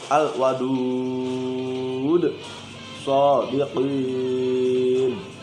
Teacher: Nah, itu mad arid lis sukun. Aslinya mad asli, tapi karena diwakafkan tadi di akhir kalimat menjadi panjang 6 harokat.